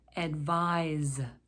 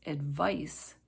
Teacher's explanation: advise with an z sound versus advice with an s sound advise is a verb advice is a noun excuse please excuse